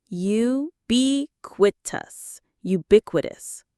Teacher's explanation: The stress is on the second syllable, ubiquitous.